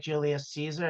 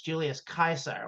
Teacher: in Latin, in Rome, they did not pronounce soft C's. It was always a hard C. So, anytime you see a C referring to anything Roman, it's always pronounced with a C sound.